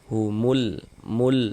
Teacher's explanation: Karena dia cara membaca huruf lamnya dibaca izhar. Dibaca jelas dia. Humul mul. Nah, terbaca kan huruf lamnya, terbaca jelas kan.